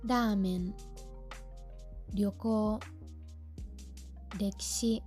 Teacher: Sé que se hace un poco raro cuando una palabra empieza con una R suave, porque en español no existe esto